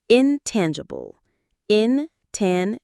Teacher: The stress is on the second syllable. Tan. Intangible.